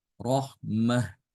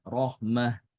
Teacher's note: ketika wakaf semua sama-sama membaca dengan ha